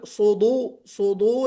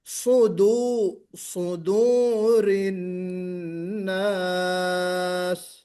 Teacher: دال صدو صدو نہیں ہونا ہے. سواد بے شک موٹا پڑھا جائے گا لیکن دال باریک ہے